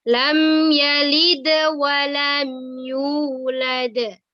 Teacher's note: lam tidak boleh dibaca dengung tapi dibaca izhar syafawi